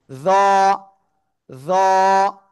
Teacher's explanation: জিহ্বার আগা, উপরের দুই দাঁতের আগায় লাগাবো, লাগিয়ে মোটা আওয়াজে উচ্চারণ করব।